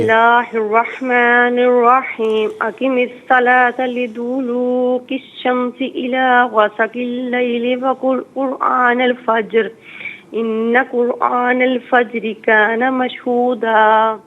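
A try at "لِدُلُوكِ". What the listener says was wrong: جزاک اللہ خیر۔ اچھا، لیدو لو کی نہیں، دال کو کھینچ کر نہیں پڑھیں گے، دال پر کوئی صرف پیش ہے نا تو اس کو بغیر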